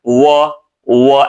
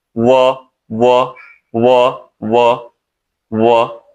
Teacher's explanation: एक दोनों होठ गोल करके बोला जाता है व व ऐसे बोला जाता है व और एक जो है नीचे वाले होठ को ऊपर वाले दांत से थोड़ा सा दबा के बोला जाता है